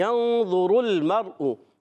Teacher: غنہ کرتے ہیں، نون کو چھپا کر ادا کرتے ہیں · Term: اخفا